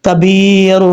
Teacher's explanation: یا ساکن سے پہلے زیر ہے، اس لیے یہاں پہ یا مد ہے، ایک الف کی مقدار لمبا کر کے پڑھیں گے